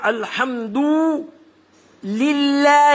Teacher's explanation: یعنی ہلکا پڑھا جائے گا اللہ کو، لیٹر کو. حالانکہ اللہ جو عز و جل کا جو نام مبارک آتا ہے وہ تفخیم ہے. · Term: ترقیق